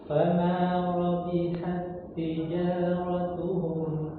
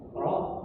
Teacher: ada huruf ra yang didahulu yang berharakat fathah maka dia tebal ya